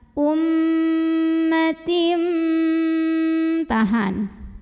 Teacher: Berikutnya di sini ada hukum iqlab karena ada tanwin kasrah yang bertemu dengan huruf ba. Maka bunyi tanwinnya yang N diganti jadi M, jadi bunyi mim sukun ya, disertai dengungan.